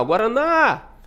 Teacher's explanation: O na demora mais, né? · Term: sílaba tônica